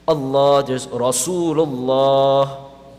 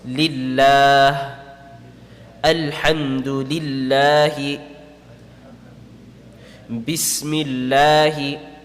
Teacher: if before lam in the word Allah there appears a fatha or dhamma, then it will be read full mouth.